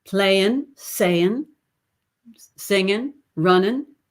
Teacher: always with the in, not the ing. Playing, saying, singing, running, and the hard R.